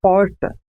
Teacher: há um movimento de retroflexão da língua em direção ao fundo da boca. É falado aqui em São José do Rio Preto, interior de São Paulo. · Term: R retroflexo